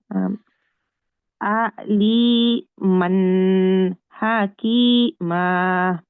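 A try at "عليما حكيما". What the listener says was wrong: হ্যাঁ, এবার ঠিক আছে।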